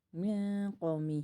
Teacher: یہاں پر ہیوی اخفا ہوگا کیونکہ آگے حروف مستعلیہ میں سے ہے